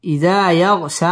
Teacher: ইযা ইয়াগশা মদ তাবাঈ এক আলিফ টেনে পড়তে হবে